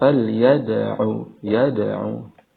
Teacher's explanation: Dal yang dipantulkan hukum bacaannya Qalqalah